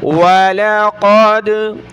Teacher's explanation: وَلَقَدْ أَرْسَلْنَا رُسُلًا مِّن قَبْلِكَ وَجَعَلْنَا لَهُمْ وَلَقَدْ واو زبر و لام زبر لا ولا قاف دال زبر قد، قاف کو موٹا کیا، دال پر ہم نے قلقلہ کرنا ہے